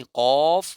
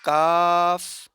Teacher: कौफ मोटा पढ़ा जाता है। काफ बारीक पढ़ा जाता है।